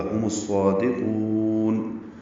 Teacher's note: ہم میں میم ساکن تھا لیکن الصادقون کا حمزہ عارضی ہے، اس لیے میم کو صاد سے ملا دیا گیا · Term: ادغام شمسی